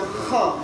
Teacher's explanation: Kha-nya pastiin itu dari kerongkongan, jangan honnas, tapi kha. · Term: huruf kha